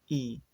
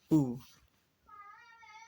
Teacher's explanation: Lalu ketika bunyi I, rahangnya turun I. Ketika bunyi U, maka bibirnya maju U.